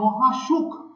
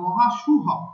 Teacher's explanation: যেমন মহাসুখ, কিন্তু চর্যাপদের ক্ষেত্রে আমরা দেখতে পাবো মহাসুহ, হ মহাসুহ শব্দ পাবো, অর্থাৎ মহাপ্রাণ ধ্বনি হকারে পরিণত হচ্ছে